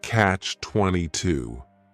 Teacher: The word catch is just one syllable, and then 22 is 3 syllables, and the stress is on that final syllable